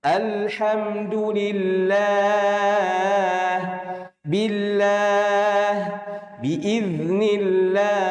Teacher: apabila lafaz Allah sebelumnya berharakat kasrah, ini cuma satu harakat ya, satu baris. Maka dibaca tarqiq, tipis.